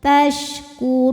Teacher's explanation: Shin punya sifat namanya tafashi, artinya menyebarkan angin di dalam mulut. Maka ini sebarkan anginnya ya.